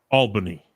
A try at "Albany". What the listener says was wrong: But Brandon's gonna be very upset you pronounced that wrong. It's Albany. You keep saying L, like you keep like pronouncing the L so weird.